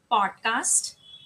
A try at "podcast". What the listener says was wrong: यहाँ पे भी ओ साउंड आना चाहिए, ए साउंड नहीं. पॉड, पॉड.